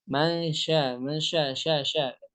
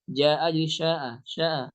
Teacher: Jadi dia mencampur suara jim dengan shin.